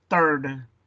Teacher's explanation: lo pronuncias como si fuera una T, third, y como que la H no existe